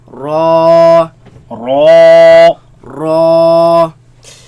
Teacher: Raise the back of the tongue. Make it heavy.